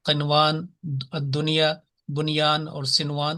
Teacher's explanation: نون ساکن کے بعد اگر یا آ جائے تو اس کو لمبا نہیں کیا جاتا، واضح پڑھا جاتا